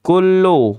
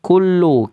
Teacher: kaf istifal, lidahnya turun, jangan isti'la, lidahnya jangan naik